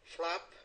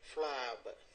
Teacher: making the vowel longer before the B because it's a voice consonant